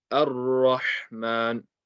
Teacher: So don't say oh, say a. Ar-Rahman, the alif is light, the ra is heavy. Ar-Rahman, Ar-Rahman, the alif needs to be light.